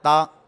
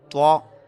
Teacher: یہاں پر تا کو باریک پڑھا ہے ہم نے، اور توا یہ حروف مستعلیہ میں سے ہے